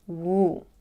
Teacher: here we're already in the position for the long you sound we go a little bit higher in pitch and we're stretching this sound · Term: long U sound